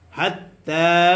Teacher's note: তায়ের উপরে খারা জবর আসার কারণে এক আলিফ টান হবে মাদ্দে তবাই